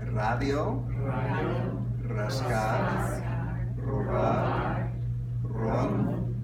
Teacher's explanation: Flora. And at the beginning of the word, it's also trilled as if it's a double R